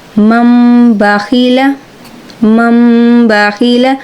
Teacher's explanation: ہم با نہیں یہاں پہ پڑھیں گے، ہم یہاں پہ میم پڑھیں گے، اور اس کو ہم یہاں پہ کہتے ہیں اقلاب۔